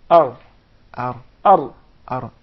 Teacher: The tip of the tongue, not the middle of the tongue, not the sides of the tongue, just the tip, the top tip of the tongue, striking or hitting slightly the gum.